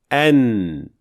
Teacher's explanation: All what you have to do is letting air out through your nasal cavity. And this sound coming from the nasal cavity is then called غنة, which then represents the second half of the sound of Noon.